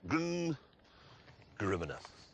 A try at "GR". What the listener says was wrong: It isn't Gruminer. It says Grum.